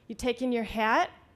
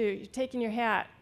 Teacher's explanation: if you say in a sentence you taking your hat and use the rising tone and the hat you know that you've got a question as opposed to you're taking your hat not a question but